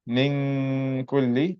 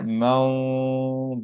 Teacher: the ghunna of a word like min kulli, I'm making a light ghunna, but here mawdud, that's a heavy ghunna sound.